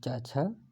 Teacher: चा वर्ग तालु से बोला जाता है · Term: तालव्य